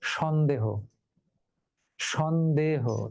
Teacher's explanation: শব্দের আদিতে স থাকলে সেই স এর সঙ্গে অধ্বনিটা বিবৃত উচ্চারণ হয়, সংবৃত উচ্চারণ হয় না